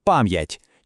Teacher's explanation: чітко чути твердий м, а потім ять